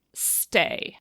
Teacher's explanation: On the contrary, if you look in the middle of a syllable, so instead of t or d, if you say stay, if you put your hand in front of your mouth, you will not feel the aspiration because it's not there. As soon as you put an extra sound that s in front of it, it goes to the unaspirated thing.